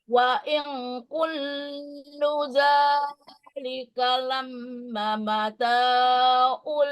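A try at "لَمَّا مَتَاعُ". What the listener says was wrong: Lemma ma ada alif ya. Jangan lama mata.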